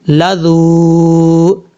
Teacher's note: ایک الف کی مقدار اس کو لمبا کر کے پڑھا جائے گا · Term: واو مدہ